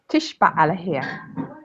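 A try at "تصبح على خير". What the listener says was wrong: Not sha, tish. Tisba ala khair. It's a sa sound, not a sha. Tis, tisba ala khair. Tisba ala khair.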